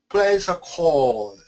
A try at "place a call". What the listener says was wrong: No. Call. Make that call long. Call. Place a call.